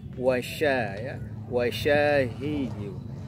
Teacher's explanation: ada suara yang berhamburan ketika mengucapkan huruf shin. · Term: Tafasyi